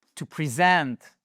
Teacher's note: C'est ici to present someone to someone. En fait, l'accentuation, elle shift, elle change, elle va sur la seconde syllabe et en plus, ça modifie ici le E qui ne se prononce plus comme un E, present, mais comme un I.